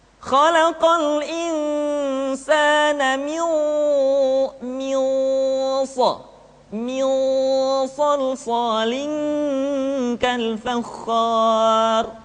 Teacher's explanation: maka harus terdengar suara gunah yang menebal atau disebut dengan tafkhimul ghunah